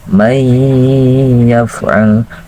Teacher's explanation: Mai gitu kan, mai. Nah, ketika kita mengucapkan mai, suara itu dimasukkan ke pangkal hidung. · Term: gunnah